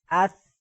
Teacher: ثا پر سیٹی کی آواز نہیں ہے